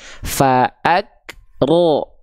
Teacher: ingat Berarti tadi Huruf tebal itu kan kayak huruf ro Bang ketika dia berharakat fathah dibacanya condong terdengar seperti vokal O